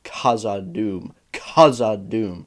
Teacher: It sounds like he's placing a ton of emphasis on that H, but that's because he is very specifically trying to pronounce both the K and the H separately and not k. He's not doing a k sound.